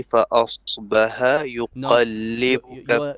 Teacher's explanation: Your ha is not good. You're doing bottom throat. فأصبح bit more middle throat.